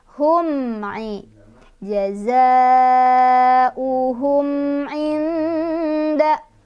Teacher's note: Di sini ada izhar syafawi karena ada mim sukun bertemu dengan huruf ain. Cara bacanya mimnya dibaca jelas.